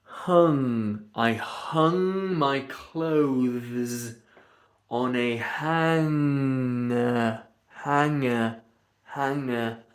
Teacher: you go to do a G, but you let the air go through your nose. So you're going to do a GG G, but instead of going and letting the air pressure build up, you hung I hung my clothes on a hanger hanger.